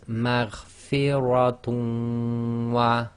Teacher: we drop the noon sakin in the dhammatain and we read the wow as if it's got shadda, and we do ghunna. So it's maghfiratun wa. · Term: idgham